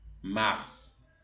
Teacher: Es una de las pocas excepciones en donde la S final se pronuncia. Entonces suena mars.